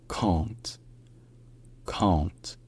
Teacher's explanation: c'est un A, mais qui est nasalisé dans cette position-là. Donc ça devient très proche du en français, sauf que le N est quand même prononcé ensuite.